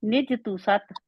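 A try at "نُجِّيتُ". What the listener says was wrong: تو سات کیوں ہے، تو سات کیوں ہے، تس سات، سا کے آگے اوپر شد ہے، سین بھی نہیں بنا دینا، تس سات، فا نرم ہے،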